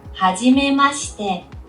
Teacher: She's like kind of leaving out the I at the very end.